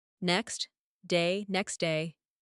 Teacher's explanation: the T sound is dropped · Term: சவுண்ட் டிராப்பிங்